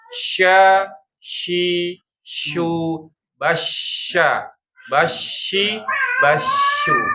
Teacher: Tafashi itu menyebarnya angin di rongga mulut ya.